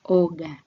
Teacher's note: o is pronounced as o in go with the lips kept apart throughout